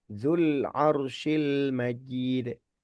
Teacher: Padahal huruf lam sukun itu bukan qalqalah gitu ya.